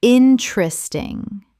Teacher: 3 syllables in natural speech. The second E disappears entirely.